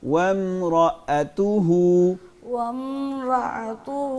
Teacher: رأتہ نہیں بولنا حمزہ کو ساکن نہیں کرنا